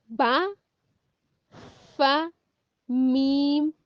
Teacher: हरूफ शफविया, वो हरूफ जो होंठों से अदा होते हैं।